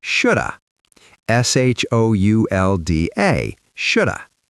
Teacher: We often change the sound to a schwa sound at the end.